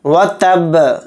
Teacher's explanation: اور با کے اوپر جزم آ رہا ہے، یعنی با کو ساکن کر کے پڑھ لیں تو با کے اندر قلقلہ بھی کریں گے